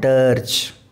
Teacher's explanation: And in American English we pronounce this R, so this is called dirge.